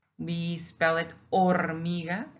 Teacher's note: Like hormiga, ant, we spell it hormiga, and it has an H in the beginning. We ignore it. We just pronounce the O.